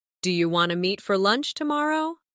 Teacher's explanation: In casual speech, do you want to often sounds like do you wanna.